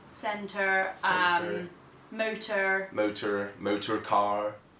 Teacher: They've got rhotic R's. So every time there's an R sound, an R written, they just pronounce the R.